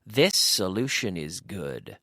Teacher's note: when I say it quickly, the S's are linked together